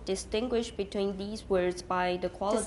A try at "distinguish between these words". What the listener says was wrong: Distinguish between these words. These, 不要重. Almost all of you stress the word these, and you should not, usually.